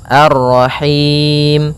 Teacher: Maka kita baca ini kita boleh memanjangkan dua harakat, empat harakat ataupun enam harakat.